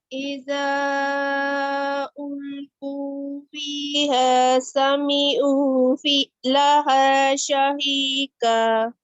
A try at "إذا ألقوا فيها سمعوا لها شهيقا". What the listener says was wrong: का नहीं करना, कौ करना है। जैसे QAW अगर कहीं लिखा होगा आपको कैसे पढ़ेंगे? देखें आपने ऐसे ही पढ़ना है, कौ, ठीक है?